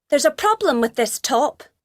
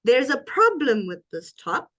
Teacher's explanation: the rising intonation on problem